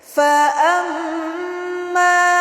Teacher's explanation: Fa amma, ada mim bertasydid, yaitu gunnah. Gunnahnya adalah gunnah musyaddadah atau disebut juga wajibul gunnah.